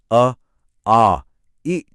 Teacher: आपकी जीभ या होंठ ने हवा को कहीं भी नहीं रोका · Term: स्वर